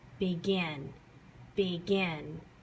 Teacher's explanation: the Gin is stretched you say it a little bit louder and you put a little bit more emphasis on it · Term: last syllable stressed